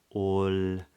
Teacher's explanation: a light L or what some people call a clear L where the back of the tongue is lower